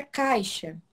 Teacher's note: Temos o A, primeiramente aqui, é uma vogal mais forte. E temos o I, que é uma semivogal. E ele está o quê? Está decrescendo. O som maior partiu para um som menor. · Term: ditongo decrescente